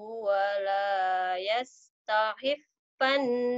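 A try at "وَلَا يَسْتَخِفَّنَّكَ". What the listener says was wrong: Takhi. Khonya kurang keluar.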